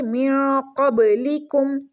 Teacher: چھوٹا کاف ہے، منہ والی سائڈ سے اس کو پڑھیں گے باریک کر کے